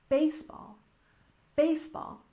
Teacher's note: baseball has a stress on the first syllable